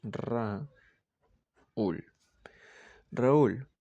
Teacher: Se dice que la U es una cerrada tónica. Y por eso se separa de la A. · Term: hiato